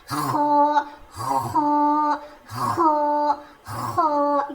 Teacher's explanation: ख मोटा पढ़ा जाएगा। इसका मखरज है हलक के ऊपर वाले हिस्से से ख अदा होता है